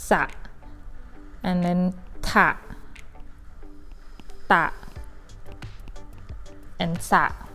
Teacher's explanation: The first syllable, you pronounce them with a sound, but unstressed a, not strong a.